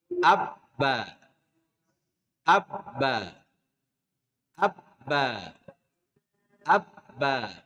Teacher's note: Contoh, bacalah abba atau ab. Kita akan mendapati suara ba keluar dari kedua bibir.